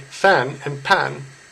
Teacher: with no true F sound speakers often use the P sound instead